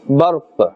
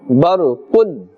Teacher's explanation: if we are stopping we will say barq. If we are continuing we will say barqun.